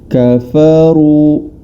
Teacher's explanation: Huruf ra berharokat dhammah, maka cara membacanya dengan ditebalkan huruf ra tersebut